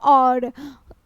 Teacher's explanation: कंठ और ओष्ठ दोनों से होता है। और बोलिएगा तो ओठ गोल होगा और कंठ से भी आवाज निकलता है, इसके कारण से इसे कंठोष्ठ ध्वनि के उदाहरण में रखा गया।